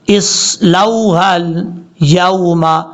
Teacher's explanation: حمزہ کے بعد جو صاد ہے فل موت پڑھا جائے گا